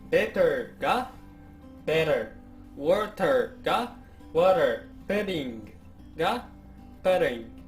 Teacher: アメリカ英語やカナダ英語では母音に挟まれた▁T▁や▁D▁は▁R▁音化します